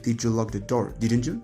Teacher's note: the final one is fall and rise like